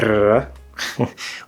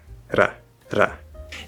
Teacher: That's it, just tap. There's no buildup of air, there's no release, you just tap or flap. Flap is like a flag flaps in the wind, so that's the motion the tongue makes.